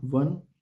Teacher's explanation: व जैसा वन शब्दों में वस्तुतः घोष संघर्षी है। यद्यपि यह किसी भी पूर्ववर्ती व्यंजन के साथ उच्चारित होकर अर्ध स्वर बन जाता है।